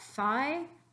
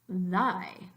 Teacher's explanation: The only difference is the sound th in thigh, which doesn't vibrate your vocal cords, and the sound th as in thy, which does let your vocal cords vibrate.